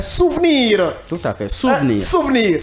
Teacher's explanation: le E muet ou encore le E sourd que l'on ne prononce pas